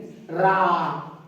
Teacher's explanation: रा जीभ आड़ोलन करेगी, इसलिए इसे लुंठित कहा गया है